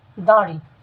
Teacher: শুরুতে যদি আমরা দাড়ি শব্দটিকে বিশ্লেষণ করি, তাহলে আমরা জানতে পারবো এই শব্দটির উচ্চারণ হচ্ছে দাঁড়ি, অর্থাৎ শব্দটির উচ্চারণ হবে দাঁড়ি। চন্দ্রবিন্দু থাকার কারণ হচ্ছে এই দা শব্দটি নাকের ভিতর থেকে উচ্চারিত হবে